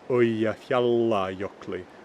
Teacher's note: So, for instance, in Modern Icelandic, two L's, instead of being held longer, right, in Modern Icelandic we would say Eyjafjallajökli rather than Old Norse Eyjafjallajökli, with that L just being held longer between the vowels.